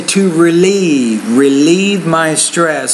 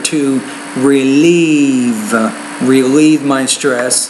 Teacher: put stress on the second syllable, and because it is the E vowel, you have to make that longer